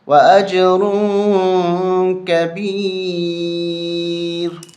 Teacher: یہاں ہمیں اخفا کرنا ہے، ناک میں آواز چھپانی ہے